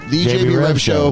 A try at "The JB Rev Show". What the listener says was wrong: The JB Rev Show. The JB Rev Show. You got to put the emphasis on the Rev. The JB Rev Show.